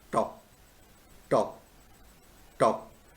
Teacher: these are sounds formed with the front part of tongue and on the alveolar ridge. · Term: alveolus